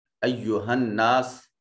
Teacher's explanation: نون مشدد ہے، غنہ واجب ہوگا، اور ناس میں الف خالی از حرکت، ما قبل مفتوح الف مدہ۔